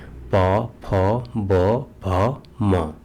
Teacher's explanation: पवर्ग व्यंजनों में जो निचला होंठ होता है ऊपर के होंठों को स्पर्श करके वायु के मार्गों को अवरुद्ध करते हैं तो उसमें पवर्ग के वर्णों का उच्चारण होता है, जैसे प, फ, ब, भ, म।